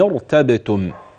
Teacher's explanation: لو بدات ارتبتم ستبدئين براء ايضا مفخمه